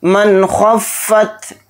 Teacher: मन नून साकिन आ गया, नून साकिन के बाद खा आ रहा है और खा इज़हार हलक़ी के हरूफ में से एक हर्फ है, तो नून की आवाज़ को ज़ाहिर करके बिला गुन्ना के जल्द पढ़ेंगे